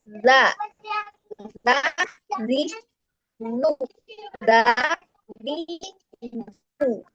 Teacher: ketika mengucapkan huruf zal dia lidahnya melewati baris gigi jadi seperti menggigit